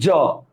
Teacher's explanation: জিব্বার আগাটা তালুতে লাগতেছে না? তালুতে লাগে উচ্চারিত হচ্ছে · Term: অন্তস্থ জ